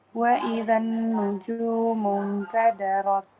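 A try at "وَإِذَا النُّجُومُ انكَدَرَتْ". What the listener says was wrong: Lidahnya, iya. Kayaknya posisi lidahnya. Kan lidahnya tadi ke belakang gigi di sini. Rot. Nah, waktu dilepas ada angin. Rot. Nah, itu kayaknya lidah bukan di sini, bukan di ujung.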